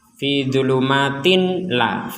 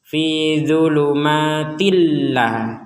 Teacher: Nah, kita kalau dalam ilmu tajwid ya ini namanya idgham bila gunnah. Idgham bila gunnah itu artinya tanwinnya ini dimasukkan ke huruf lam, tilla. Jadi tidak lagi dibaca tinla.